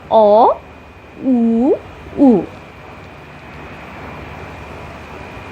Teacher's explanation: আর স্রধ্বনি এই শ্রেণীর এরপরে আসে পশ্চাৎ স্বরধ্বনি। এই জাতীয় স্বরধ্বনি জীবের পেছনের অংশের সাহায্যে উচ্চারণ করতে হয়